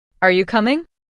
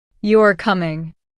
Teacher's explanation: The rising tone shows it's a question. The falling tone shows it's a statement. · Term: intonation